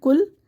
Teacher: कॉफ को बारीक कर देते हैं